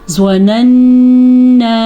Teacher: نون کا غنہ بھی ادا کرنا ہے اور الف کی مد بھی ادا کرنی ہے۔ یہ الف کی مد جو ہے یہ تقریباً 4 الف کے برابر ہے، تو اس کو 4 سیکنڈ تک آپ نے لمبا کرنا ہے۔